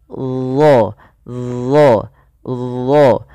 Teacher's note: Yang dimana isti'la itu berkenaan dengan posisi lidah kita, yaitu pangkal lidah kita angkat ke langit-langit agar menempel, ya, supaya menebalkan huruf huruf dha ini. Nah, ujung lidah ketika melafalkan huruf dha itu kita tempelkan dengan gigi seri atas kita.